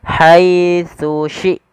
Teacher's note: tsa yang pertama Ujung lidah kita menempelkan dengan gigi di atas kemudian syin dari tengah lidah kita beda antara tsa dan syin